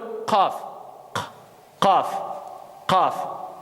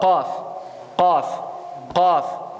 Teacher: c'est le fond de la langue qui s'appuie contre le palais. Et donc, on donne le qaf.